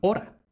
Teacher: También vamos a tener o cerrada a partir de o larga latina. Por eso de latín hora tenemos el español hora.